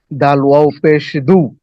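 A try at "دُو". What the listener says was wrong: ডাল ওয়াও পেশ একালিপ টেনে পড়তে হবে, ডাল ওয়াও পেশ দু। ডাল ওয়াও পেশ দু একালিপ টান।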